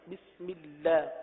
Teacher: اللہ کے لام کو باریک پڑھیں گے